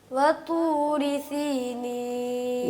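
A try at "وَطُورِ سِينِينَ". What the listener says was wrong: سین کی آواز کلیئر کیجئے.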